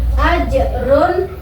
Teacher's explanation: ada pemisah antara bunyi tanwin dengan huruf yang menyambutnya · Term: izhar